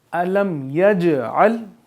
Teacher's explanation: जीम पे जज़म है और जीम यहाँ पे कलकला लग रहा है